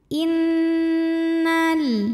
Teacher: lebih utama Inal in ada hukum ghunah musyaddadah karena Nun bertasdid cara bacanya dengung bunyi n-nya tahan sampai ada getaran halus ke hidung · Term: gunnah musyaddadah